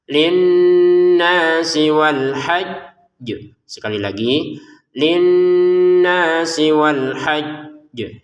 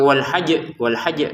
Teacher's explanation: Kalau kita berhenti maka jimnya dipantulkan dengan ada tekanan. Jadi ditekan dulu baru dipantulkan. Sekali lagi, kalau ada jim tasdid dan baju di tokos itu ya, jim dal tokof itu yang bertasdid ya, kita berhenti di situ, maka ya ditekan dulu baru dipantulkan.